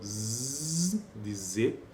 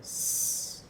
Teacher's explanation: neste caso das fricativas alveolares, tem uma vozeada, que é o Z de Z, e o S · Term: fricativa alveolar